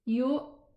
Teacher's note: by the total closure of the vocal cords, I was able to pronounce the Hamza sakina